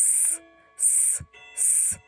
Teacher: ми чуємо шум, тому цей звук у нас глухий